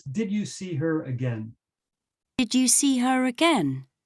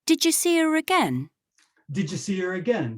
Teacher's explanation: So the did you becomes did ya. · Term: spoken sound shape